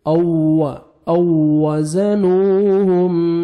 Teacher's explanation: واو کو اچھی طرح ادا کریں گے، لپس کو راؤنڈ میں لے کے جائیں گے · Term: واو مشدد